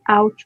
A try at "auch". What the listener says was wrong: No, not ouch. Auk. Kha sound. CH will be kha.